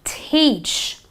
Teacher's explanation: it is a long e the E is almost elongated you know you stretch your e